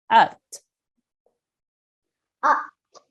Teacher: Remember the ayn comes from the throat